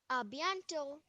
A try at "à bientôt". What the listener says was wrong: À bientôt. Okay, yeah, it's not a t sound, it's a th sound. Like you have in Hindi, you have a th sound. A bientôt.